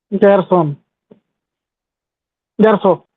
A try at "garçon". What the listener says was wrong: It's not garçon, garçon. So you have to say ga, son, garçon, garçon. The N sound does not come because there is no vowel after.